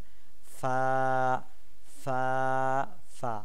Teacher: নিচের ঠোঁটের পেটের সাথে সামনের উপরের দুই দাঁতের আগাকে লাগিয়ে আমরা উচ্চারণ করব একটি মাত্র হরফ, সেটা হচ্ছে ফা ফা ফা।